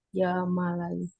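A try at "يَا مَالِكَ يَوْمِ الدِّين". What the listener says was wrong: Ya malika, bukan malaika. Ya malika.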